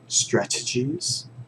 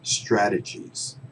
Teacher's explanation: Because this T, remember, English speakers, we can be pretty lazy with our T's, especially the ones in the middle of the sentence. You can hear strat, or you can hear strad.